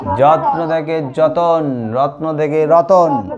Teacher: আগে বলবে একটা যুক্ত ব্যঞ্জন থাকে, যুক্ত ব্যঞ্জন দুটো, হ্যাঁ দুটো ব্যঞ্জন ধ্বনি জুড়ে থাকে, তাই যুক্ত ব্যঞ্জন থাকে। আর সেই যুক্ত ব্যঞ্জনের মাঝখানে কোনো না কোনো স্বরধ্বনি প্রবেশ করে। স্বরধ্বনি ঢুকে কি করে না, যুক্ত ব্যঞ্জনকে পরস্পর থেকে ভাগ করে দেয়, আলাদা করে দেয়, পৃথক করে দেয়। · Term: স্বরভক্তি